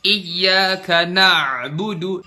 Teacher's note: Makhraj ainnya bener tuh di situ, di tengah tenggorokan. Na'budu, tapi kita lebay, kita terlalu tenggelam di huruf ain.